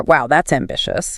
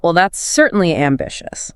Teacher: >> I slowed down. >> You added pauses. You dropped the pitch significantly.